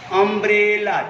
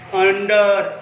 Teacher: जब अम्ब्रेला बोल रहे यू नहीं आ रहा है, अ आ रहा है